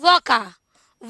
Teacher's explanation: तो देखिए एक व शब्द ही ऐसा है, ये व वर्ण ऐसा है जिसका दंतोष्ठ उच्चारण स्थान है, केवल और केवल व का। ठीक है, कंठोष्ठ के भी कई हैं, कंठताल के भी 2-4 मिल जाएंगे, लेकिन दंतोष्ठ का केवल एक ही वर्ण मिलता है, केवल व को दंतोष्ठ से बोलते हैं।